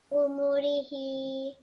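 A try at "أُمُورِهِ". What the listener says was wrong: Perfect. Excellent. Really nicely read.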